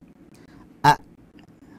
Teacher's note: Saat kita mengucapkan al-halq misalkan a, hamzahnya berhenti di mana? Di tengah di tenggorokan bagian bawah.